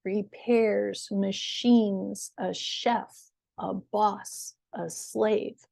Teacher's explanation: So notice that that first syllable is shorter. The second syllable of these words is higher, longer, and louder in pitch.